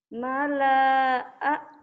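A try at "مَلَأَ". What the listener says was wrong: Nah, itu kan ada barisnya, jadi nggak panjang. Alifnya. Jadi pendek.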